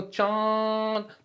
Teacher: नाक से जो है क्या है कम आ रही है लेकिन मुंह से ज्यादा जो है वायु निकल रही है